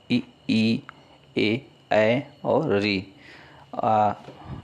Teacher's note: जिन स्वरों के उच्चारण में जीवा का अग्र भाग सक्रिय रहता है उसे अग्र स्वर कहते हैं।